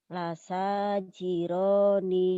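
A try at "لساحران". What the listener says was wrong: Lasajiro bukan jiro. Hiro. Bukan lasajiro, lasahiro. Lasahiro bukan lasajiro.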